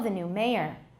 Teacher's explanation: It slowly gets lower and lower. The pitch gets lower and lower. At the beginning of a new topic, a new paragraph, we start out high and energetic. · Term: declination